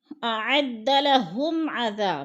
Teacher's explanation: میم ساکن کے بعد عین حرف حلقی میں سے آ گیا ہے تو ادھر اظہار شفوی ہو رہا ہے، ہم نے غنہ نہیں کرنا، لفظ کو صاف صاف ظاہر کر کے پڑھنا ہے۔